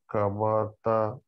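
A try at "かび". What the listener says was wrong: You said ba, which is that, but we have b. Kabi.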